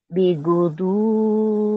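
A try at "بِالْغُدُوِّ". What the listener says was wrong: Bil, nah itu lamnya dibaca tuh. Bil godowe, bil godowe. Ini lamnya dibaca nih. Bil godowe. Kalau tadi ini nggak dibaca yang ini. Bil godowe.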